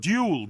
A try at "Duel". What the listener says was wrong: You pronounce it as though it's a jewel in the crown.